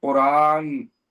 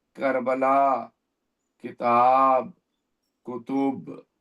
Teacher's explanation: قرآن میں قاف میں بھاری آواز ہے، لیکن جب کاف ادا کر رہے ہیں تو ہلکی آواز ہے · قاف جب کہیں گے تو حلق کے آخری حصے اوپر کے حصے سے آواز نکالنے کی کوشش کریں گے، اور جب کاف کہیں گے تو زبان کا آخری حصے سے تھوڑا سا پہلے ادا کرنے کی کوشش کریں گے۔